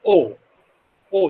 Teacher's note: back half closed vowel which means the back of the tongue has raised to the half closed position